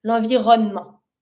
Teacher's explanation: When you say it pretty fast, like in a conversation with it, then just slightly pronounce the E, l'environnement.